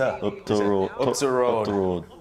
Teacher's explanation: there's also places in Yorkshire where they say up the road. Up the road. Instead of saying the, they say t.